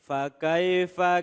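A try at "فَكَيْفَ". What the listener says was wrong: Ulangi lagi. Kurang neken.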